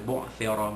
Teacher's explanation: Ya'lamu idza, ay idza dal alif di atas dha, ma asli. Bu'thira, ra bari atas dibaca tebal